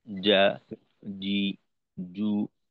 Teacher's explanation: কারণ আমাদের জিমের উচ্চারণে যাদের ভুল হয়, ভুল হওয়ার বড় কারণই হলো আমরা একেবারে জিহ্বার আগার দিকটা ব্যবহার করি। আমরা জিহ্বার আগার দিকটা ব্যবহার করব না, বরঞ্চ জিহ্বার মধ্যখানের সামনের দিক।